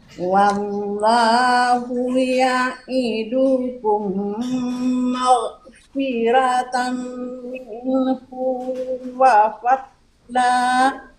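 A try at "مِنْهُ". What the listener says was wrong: Minhu, hunya pendek aja. Wallahu ya'idukum maghfiratan minhu wa fadla.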